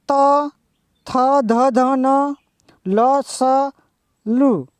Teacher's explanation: દંત્ય, આ દંત્ય માટે સંસ્કૃતમાં વ્યાખ્યા આપી છે લુતુ લસાણામ દંતાહ, એટલે જે વર્ણનું ઉચ્ચારણ કરતી વખતે જીભ ઉપલા દાંતને સ્પર્શી ધ્વનિનો ઉત્પન્ન કરે છે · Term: દંત્ય વ્યંજનો